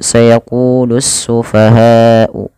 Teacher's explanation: panjangkan lafal bunyi ha sepanjang 4 harakat atau 5 harakat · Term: mad wajib muttasil